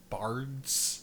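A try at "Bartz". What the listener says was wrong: No, with a T. No, that's the first name is Bart's. That's the character's name. Bart's, not Bart.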